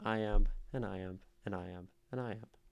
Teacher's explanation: two syllable chunks which means we have eight syllables per line so it goes unstressed stressed unstressed stressed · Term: tetrameter